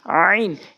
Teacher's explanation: আইন অর্থাৎ হলকের মাঝখান থেকে আইন চাপ দিয়ে আইন।